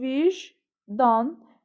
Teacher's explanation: Vicdan sözünün tələffüzü vicdan, yəni c, j kimi tələffüz olunur. Vurğu son hecanın üzərinə düşür, düz deyir bunu.